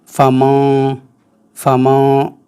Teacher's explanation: نون چھپ رہا ہے اور ناک سے نکل رہا ہے۔ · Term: اخفا